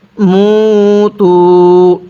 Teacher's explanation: মিম ওয়াও পেশ, মু। পেশের পরে ওয়াও সাকিন, এক আলিফ টানতে হয়।